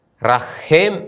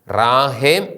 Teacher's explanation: ആദ്യ അക്ഷരമായ ആലഫ് ഹേസിൻ്റെ ആ എന്ന സ്വരം ദീർഘിക്കുന്നു. റഹേം എന്ന് വായിക്കുന്നതിന് പകരം ഇത് റാഹേം എന്നാണ് വായിക്കുന്നത്.